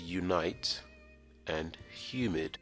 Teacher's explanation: the letter u can also be pronounced with y as in the words unite and humid